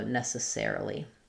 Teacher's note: So in ne, sa, or necessarily, our stress falls before the necessaire, the air syllable, the ser syllable. So you're going to have kind of a short secondary stress on the ne. So first letter E is going to say ne. · we're just very short on the unstressed syllables.